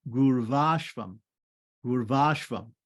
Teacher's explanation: So Guru Ashvam becomes Gurvashvam, Gurvashvam. The last U, short U on the end of Guru is going to turn into a V